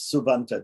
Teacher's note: because of the A, the P turns into a B and it becomes subanta